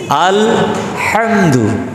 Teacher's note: হলকের মধ্যখান থেকে আইন হা, আলহামদুর যেটা হা এটা হচ্ছে হলকের মধ্যখান থেকে